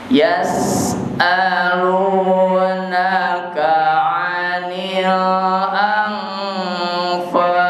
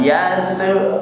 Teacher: Jadi jangan ditelan suara sin itu, dikeluarkan napasnya. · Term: hamas